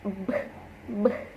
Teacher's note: in B, there is a vibration in the vocal cords. Maksudnya di sini B dan P itu sama dalam penyebutannya, kecuali B itu ada getaran di bagian pita suaranya.